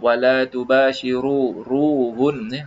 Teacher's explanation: Kita sebut wala tubashiruhun, ru disebut tebal.